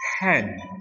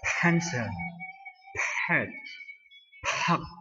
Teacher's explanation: P juga dengan suara meledak, ya.